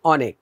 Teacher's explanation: অনেক, এখানে কিন্তু হসন্ত আছে, হ্যাঁ হসন্ত, অর্থাৎ শেষে মুক্ত উচ্চারণ হবে না, ধ্বনিকে বন্ধ করে রাখতে হবে